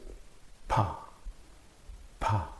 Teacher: you this said they are closing the leaves p p so you are blocking the air flow and suddenly releasing